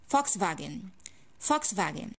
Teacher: Speaking of this car brand, I have to take care of the original language because this word is a German one. When it comes to the V sound, it's pronounced like F sound. And when it comes to the W sound, it's pronounced like V sound. And the L is silent.